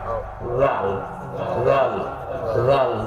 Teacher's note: জিহ্বার আগা সামনের দুই দাঁতের আগার সঙ্গে লাগবে। সবাই এই জিহ্বার আগাটা জাল জাল জাল, পাতলা, জালের উচ্চারণ পাতলা।